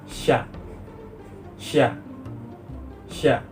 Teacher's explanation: dihasilkan oleh bagian tengah lidah sebagai artikulator dan langit-langit keras sebagai titik artikulasi proses artikulasinya ialah reaktif dihasilkan dengan cara menggesekkan udara yang keluar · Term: lamino palata